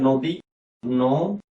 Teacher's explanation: লক্ষ্য করো, আমি এখানে হলো দয়ের উপরে দীর্ঘ ইকার, কিন্তু আমি এখানে দিয়েছি হ্রস্ব ইকার। আমাদের বাংলায় দীর্ঘ ইকার এর উচ্চারণ খুবই স্বল্প, খুবই কম, একেবারে নাই বললেই চলে।